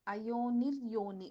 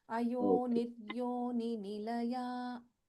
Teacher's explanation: Only in the first name, Ayonir Yoni. We should not prolong this Ayoni. It's a short vowel there.